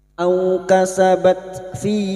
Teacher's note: bertemunya mad dengan hamzah di lain kalimat mad jaiz munfasil. Mad jaiz munfasil. Kita panjangkan lima harakat.